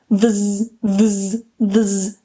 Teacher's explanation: The voiced one is very similar, so we need to keep our vocal cords vibrating. We start with v, and then we very quickly move into a z. It's the exact same movement as fs, but this time we need to keep the voice going, the vibration here. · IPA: /ðz/